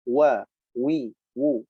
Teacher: waw mempunyai sifat jahar, wa, wi, wu, nafas tertahan, ya, tidak keluar ketika mengucapkan huruf waw